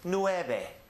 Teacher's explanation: remember that the V is usually pronounced as a soft B sound